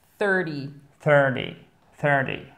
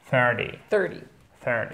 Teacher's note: on a le T qui se prononce presque comme un D